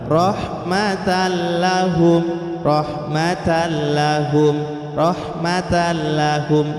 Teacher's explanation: Jadi langsung, yang penting nun sukunnya dimasukkan huruf berikutnya, atau huruf yang bertanwin itu langsung masuk ke huruf berikutnya tanpa ditekan, tanpa dengung. Rahmatallahum, rahmatallahum, rahmatallahum, tanpa ditahan dan cepat. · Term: idgham bila guna